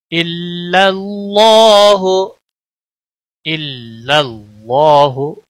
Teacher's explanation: اللہ کے لام کو موٹا پڑھیں گے، کیونکہ اس میں جلالہ کا نام جہاں پر بھی ہے اس کے پچھلے حرف کے اوپر جب زبر یا پیش ہو تو پور پڑا جاتا ہے، اور جب زیر ہوتی ہے تو باریک پڑا جاتا ہے۔